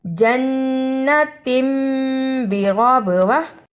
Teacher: غا کو پر پڑھا اور با پہ قلقلہ بھی کیا کیونکہ یہاں با پر جزم ہے۔ جزم کی صورت میں با پر قلقلہ لازم ہے۔